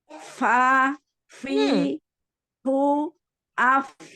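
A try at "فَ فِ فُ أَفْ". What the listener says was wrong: Nah, sekarang fu-nya hilang. Nah, ini butuh kekonsistenan dalam makhraj ya, dalam sifat ya. Jadi tidak berpindah untuk sifat tetap dikasih ketika dia kasroh, dhammah, fathah ya. Terlebih dia sukun, itu harus sifatnya harus terlihat ya. Fa, fi, fu, af.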